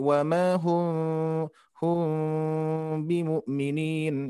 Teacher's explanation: Sedangkan mim sukun bertemu ba itu ditahan ya, didengungkan dan juga disamarkan, diikhfakan secara bacanya. Jadi tidak dirapatkan. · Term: ikhfa syafawi